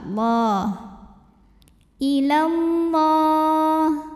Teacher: Lam pada lafaz Allah dibunyikan secara tafkhim karena huruf sebelumnya fathah, maka dibacanya tebal.